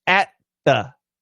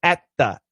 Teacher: We do a glottal stop to help us with the T. Glottal stop to help us with the T.